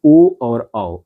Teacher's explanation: इसके बाद आता है आपका कंठोष्ठ वर्ण, यानी कि कंठ और होठ दोनों को मिलाकर के कंठ और होठ, जिन वर्णों के उच्चारण में कंठ तथा ओष्ठ दोनों का सहयोग करके उच्चारण किया जाए वो कंठोष्ठ वर्ण कहलाते हैं। इसके कि ओ और औ, ये दो जो वर्ण हैं आपके कंठोष्ठ वर्ण कहलाते हैं।